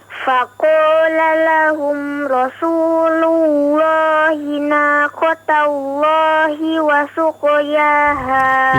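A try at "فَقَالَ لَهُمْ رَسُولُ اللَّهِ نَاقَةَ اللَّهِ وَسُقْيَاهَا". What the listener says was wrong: Itu Rasulullah, lu pakai waw ya. Lullah ya, naqatallah. La, tidak begitu ya. Nah, dicoba latih saja terus nanti ya, huruf atau lafzul jalalah, lafaz Allahnya ya, lamnya dipertebal.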